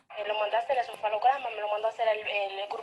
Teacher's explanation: se repite el esquema anterior de una fuerte subida de tono en medio de la oración enunciativa